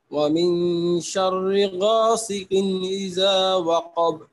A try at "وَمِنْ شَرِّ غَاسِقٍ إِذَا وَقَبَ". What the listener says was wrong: এটা মোটা হবে না, শর আপনি শররি মোটা হয়ে যাচ্ছে, চিকন হবে। غاسقين غاسقين قاف উচ্চারণ